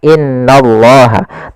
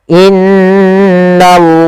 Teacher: kita namakan dengan bacaan gunah langkah membacanya atau cara membacanya yaitu kita menahan suara nunnya di sini maka in maka ditahan sepanjang dua harakat tidak langsung Dibaca innallah tapi ditahan dulu sepanjang dua harakat untuk